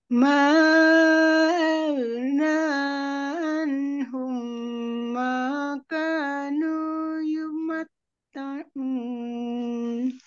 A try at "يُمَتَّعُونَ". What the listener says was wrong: Ainnya dari tengah tenggorokan ini. Yumatta'un.